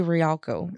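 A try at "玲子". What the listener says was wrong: It's because you're trying to pronounce that I. Reiko? Reiko.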